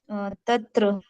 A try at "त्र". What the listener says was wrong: त नहीं, त प्लस र क्या होता है? वो वर्ड संयुक्त अक्षर बनता है जो।